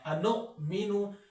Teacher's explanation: حمزہ ہے تو وہاں پہ جھٹکا دینا ہے